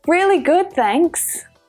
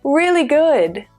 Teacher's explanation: both words are stressed equally